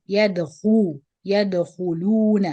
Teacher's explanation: the kha and lam has dhamma on the top, so you bring the lips together to the front and make the dhamm.